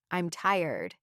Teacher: When you make a statement like, I'm tired, your voice goes down.